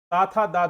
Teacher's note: दांतों के साथ जिह्वा के मेल से उच्चारण किया जाता है